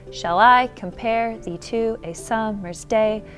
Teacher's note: ten syllables and every other syllable is stressed